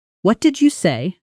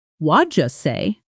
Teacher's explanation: Waja say the t sound softens. The d and y blend into a soft j sound. and the whole phrase compresses into something that barely resembles the written words on a page.